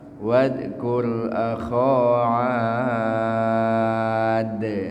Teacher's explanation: Ad, a-nya dipanjangin, kemudian dalnya dikolkolahkan. Nun mati berdengan dal disebut apa? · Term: qalqalah kubra